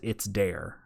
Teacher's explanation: he did the D sound instead of a TH sound